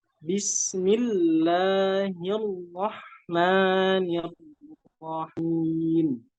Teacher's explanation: Kemudian kalimat Ar-Rahman, di situ roknya berharokat fathah, harus dibaca dengan tebal. Harus dibaca dengan tebal dan diberikan nabroh.